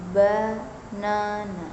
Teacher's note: In the word banana, the first and last syllables are unstressed. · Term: unstressed syllables